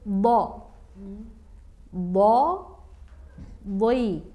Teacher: Yang kedua huruf bo, bo, boi. Nah, itu meskipun berbaris kasroh tetap harus ada efek tebalnya. Jadi seperti doi, seperti duit gitu.